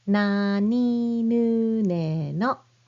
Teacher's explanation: start with the N sound just like English N, but you press your tongue right behind your front teeth